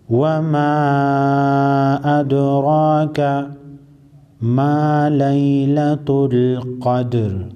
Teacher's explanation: دال ساکن باندې با قلقله کو، قاف طا با جیم دال دا فنزا حرفونه دا سدی دیتا حروف قلقله ہوئی. · را باندې زبر دی پیړه به وایو، دال باندې به قلقله کو، دال به راتنبو.